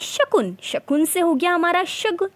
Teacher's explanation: वो वहाँ पर अघोष जो ध्वनियाँ थी वो सघोष में परिवर्तन हो गई हैं, ये हमारा क्या है, सघोषीकरण कहलाता है।